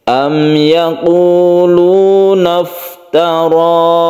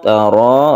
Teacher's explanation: Am yaquluna iftara. Tara, rohnya ini adalah mad tabi'i dan dia itu dibaca tebal atau tafkhim disebabkan karena roh ini berfathah.